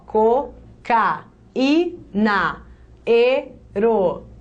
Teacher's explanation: Duas vezes eu tenho o I formando hiato sozinho na sílaba. Ele leva acento.